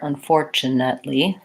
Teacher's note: For unfortunately, second syllable stress, so short, long, short, short, unfortunately, 3 syllables there.